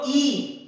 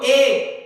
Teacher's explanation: आप बोलो ई तो मुंह थोड़ा खुलेगा, आप बोलो ए तो उससे ज्यादा खुलेगा, लेकिन आप बोलोगे आ तो मुंह पूरा खुल जाएगा।